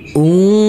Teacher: Huruf nun yang bersukun ini kita baca dengan samar-samar.